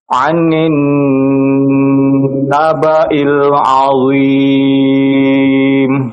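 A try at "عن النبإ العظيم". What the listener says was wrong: jangan terlalu panjang ya untuk gunah-gunanya, jangan anin nabail, ini kepanjangan. Anin nabail.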